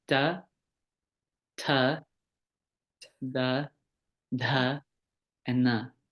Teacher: And then dantyaha, the dentals. where the tongue is close to the teeth, right behind the teeth.